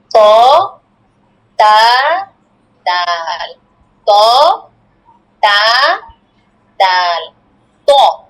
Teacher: জিহ্বার আগা সামনের উপরে দুই দাঁতের গোড়ার সঙ্গে লাগাইয়া